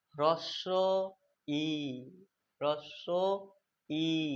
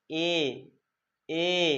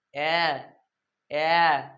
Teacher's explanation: এই তিনটে বর্ণ উচ্চারণ করার সময় আমাদের জিভটা কিন্তু সামনের দিকে এগিয়ে আসছে। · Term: সম্মুখ স্বরধ্বনি